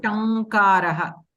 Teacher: So ka varga starts at the base of your throat. So this na also, that anunasika shabda also should come from your throat ikkada, not from your nose.